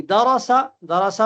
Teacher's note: درسا میں را کو موٹا پڑھیں گے